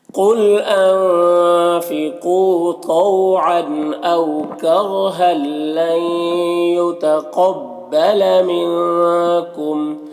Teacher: یہاں پر تنوین کے بعد لام ہے حروف یرملون میں سے، تو یہاں پر ادغام تام ہوگا، بغیر غنہ کے پڑھیں گے · یہاں پر نون ساکن کے بعد یا ہے حروف یومین میں سے، تو یہاں پر ادغام ناقص ہوگا، غنہ کے ساتھ میں پڑھیں گے. قاف کو اوپر پڑھیں گے، حروف مستعلیہ میں سے، یہاں پر نون میں اخفا ہوگا